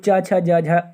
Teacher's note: च वर्ग को स्पर्श संघर्षी व्यंजन कहा जाता है